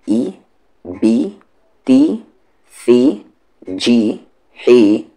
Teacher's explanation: یعنی ای پڑھنا ہے نہ کہ اے. تو حمزہ پہ زیر ہے یہاں ای، بی، تی، ثی، جی، حی، خی، دی، ذی، ری، زی، سی، شی، صی، زی.